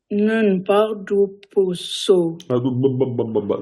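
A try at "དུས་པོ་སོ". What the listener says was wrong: Duposo, il n'y a pas. Nun par dupso.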